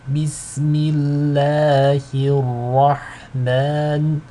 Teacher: The ha is light, but the ra is heavy.